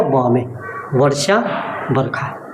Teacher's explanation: व का ब में बदलना।